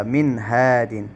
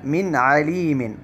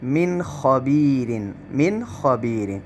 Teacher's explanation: نون ساکنہ ہے اور دوسرے کلمے کے شروع میں ہا حروف حلقی میں سے ہے، تو یہ ایسے موقع پر بھی اظہار ہوگا